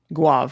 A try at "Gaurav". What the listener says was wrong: Gaurav. There's an R in there.